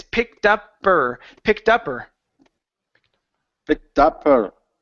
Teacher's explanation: connect the word her picked uper Pi pick up her okay drop the H on her okay we don't need to say it · with words like her, his, him, has, we don't need to pronounce the H in front of those words. We can drop it.